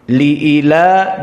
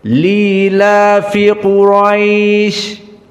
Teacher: Li'ila dihapuskan hamzahnya menjadi lila fi Quraisy